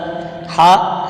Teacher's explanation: हा हलक के दरमियान वाले हिस्से से अदा होता है